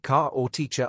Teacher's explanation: in British English the R at the end of words like car or teacher often isn't pronounced strongly